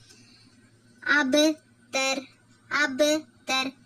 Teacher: இது வந்து கல்கலா சுக்ரா சரிங்களாமா லைட்டா அசைச்சு ஓதணும்